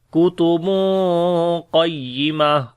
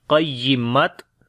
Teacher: پڑھیں گے کتب قیمہ، قاف کو بھی موٹا پڑھیں گے اور آخر میں جو تا ہے وہ ہا بن جائے گی اور دو پیش بھی ختم ہو جائیں گی ، تو نہ تو آپ نے تا یہاں پر پڑھنا ہے